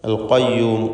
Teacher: അൽ ഖയ്യൂം ഖാഫ് തഫ്ഖീം ചെയ്യേണ്ട അക്ഷരമാണ്, ഇസ്തിഅലാന്റെ ഹർഫാണ്. ഖാഫും അതിൻ്റെ മഖ്റജിൽ നിന്ന് വ്യക്തമാക്കി ഉച്ചരിക്കുക.